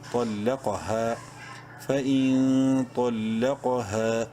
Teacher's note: قاف زبر قا طلق، ہا الف زبر ہا، ایک الف کے برابر لمبا کریں گے ہا کو الف مدہ کی وجہ سے